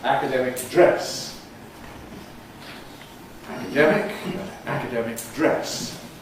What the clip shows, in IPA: ˈækədemɪk ˈdres